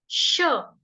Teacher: ठीक, उसके बाद जब हम शलगम वाला श बोलेंगे, श श, जीभ हल्की सी फोल्ड होगी और दांतों को छुएगी, टच करेगी, श श श, दांत थोड़े से खुलेंगे, हवा निकलेगी बीच में से